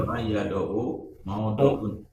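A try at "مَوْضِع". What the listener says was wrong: tetap maudiun karena tadi misal huruf ilat di awal semuanya kasroh, nggak ada yang fathah.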